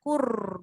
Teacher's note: Takrir tu memang ada. Sentiasa ada. Tapi jangan banyak.